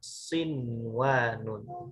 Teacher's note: Setiap yang kata sinwanun ini dibaca secara izhar mutlako. Jadi jangan diidgom